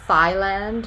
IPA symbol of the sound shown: θ